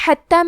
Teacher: کلمت حتی میں حا کی ادائیگی حلق کے درمیان والے حصے سے ہے. تا پہ تشدید ہے تو ہمیں 2 حرف کے برابر تا کو پڑھنا ہے